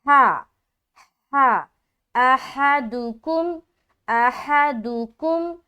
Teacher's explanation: ہا کا مخرج کیا ہے؟ وسط حلق